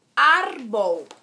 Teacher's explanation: que tem 2 sílabas e a mais forte é o ar. Termina com consoante, que não é N nem S.